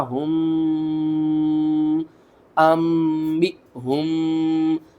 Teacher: کیوں ہم نے یہاں پر غنہ کیا ہے؟ کیونکہ یہاں پر دیکھیں میم ساکن کے بعد اگلا حرف آ رہا ہے با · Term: اخفاء شفوی